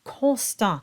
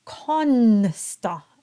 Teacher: constant though the singers will vocalize the N that is incorrect the N is only there to nasalize the O it is not voiced as a separate consonant on its own